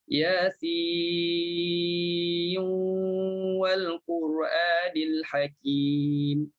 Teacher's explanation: Kita dah masukkan nun dalam waw. Masukkan nun dalam waw. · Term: idgham